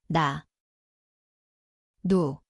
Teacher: Ia berbunyi seperti N. Tempatnya adalah hujung lidah, gusi atas.